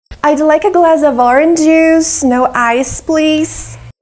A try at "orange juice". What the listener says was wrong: Orange juice. This is not correct. First, we need to sound or like floor and more. Orange juice, orange juice. We need another sound. Now, we don't say orange juice. We don't have two j sounds.